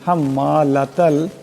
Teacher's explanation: লাতাল এখানে তা আছে আওয়াজটা পাতলা করে পড়তে হবে